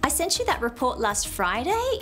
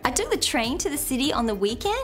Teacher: the upswing is the rising intonation at the end of a statement not a question but a statement